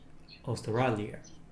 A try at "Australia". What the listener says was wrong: So it's not being pronounced as ah, it's being pronounced as a. Australia. Australia.